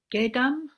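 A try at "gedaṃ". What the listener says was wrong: Gedang. Gedang, NG ending, yeah.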